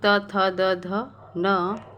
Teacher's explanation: तो हमारी जो जीभ है वो दांतों के स्पर्श कर रही है, तो इन वर्णों का उच्चारण दंत से होता है।